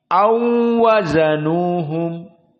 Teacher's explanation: Naam aula hanya dibaca dengan au, wawunya dalam keadaan sukun. Namun di Wars dibaca au waw sakinah bertemu dengan wazanuhum. Maka di sini dibaca dalam keadaan musyaddadah.